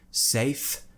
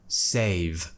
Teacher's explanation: at the end safe save there's a big difference okay and it's just that tiny bit of voice which I add to the end